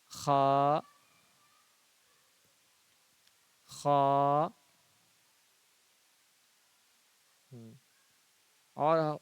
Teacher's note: وہ کھا نہیں خا ہے، حلق سے اس کو پڑھنا ہے، خا، خا۔ اور ہلکا اندر سے خا۔